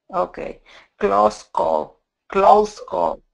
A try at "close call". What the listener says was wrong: Good, very good. Also, this is these words need to be tightly together.